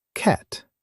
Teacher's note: For cat, your mouth opens wide and the sound is at the front.